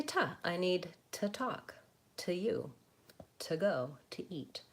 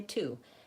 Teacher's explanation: Americans don't use the vowel oo when they're using that word to in connected speech. That's because that word is never really stressed when it's this one, to.